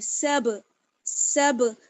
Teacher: آواز بند نہیں ہوگی، آواز لوٹ کر آئے گی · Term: حروف قلقلہ